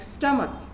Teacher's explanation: Let me give you explain this with an example, like stomach. Now stomach of course ends with ch, but the sound which is coming when we pronounce it is k